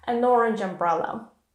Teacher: next begins with a vowel i'll show you in a second we link them together so that it's impossible to say where one word ends and the next one begins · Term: connected speech